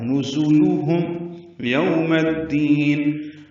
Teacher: ہونٹوں کو ناتمام گول کریں گے، آگے رہیں گے. میم کو الدین کی دال سے ملا دیں گے.